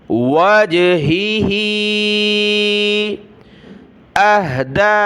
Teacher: دوسری ہا کو نیچے کی طرف کھینچنا ہے, مد ہے